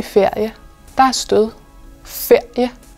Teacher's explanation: nogle gange udtaler vi en konsonant som en vokal og så kan der også være stød på for eksempel æret i ferie